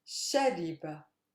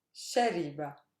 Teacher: My stress lies on the sha because the last syllable is not super heavy. The one before it is not heavy.